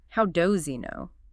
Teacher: The H just kind of melts away.